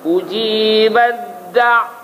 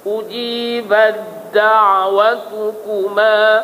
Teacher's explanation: Dia tak ada bunyi ta dah. Masuk da terus.